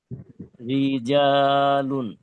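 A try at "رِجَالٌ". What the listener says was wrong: এই রি টান হয়ে গেল, টান হবে না। রিজা, এই রটা মানে রিটা, রিটা কি মোটা হবে না চিকন হবে বলতে পারবেন?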